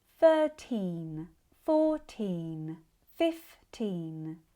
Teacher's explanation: all have the long E like in sheep which is fuller, sustained, and longer.